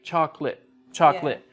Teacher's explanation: we don't use all of the syllables with chocolate